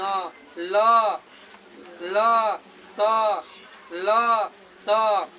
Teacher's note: जहाँ स बोल रहे हैं तो आपका जीवा दोनों दांतों के बीच में आ जा रहा है